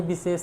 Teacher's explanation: विशेष में मित्रों तालव्य सा और मूर्धन्य सा होता है।